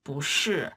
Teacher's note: it sounded like the 不 turned into a second tone instead of the fourth tone.